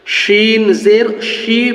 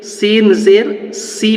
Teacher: সিনের ক্ষেত্রে বাংলা দন্তস এর উচ্চারণ পাতলা করে যে দন্তাস উচ্চারণ হবে